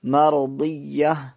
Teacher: وقف کرنا ہو تو وہ ہائے ساکنہ یعنی جزم والی ہا بن جاتی ہے